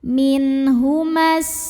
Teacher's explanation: Madnya ini gugur, mimnya pendek, min humas, namanya takhalus bil hadfi. Kenapa? Karena ada pertemuan 2 huruf sukun.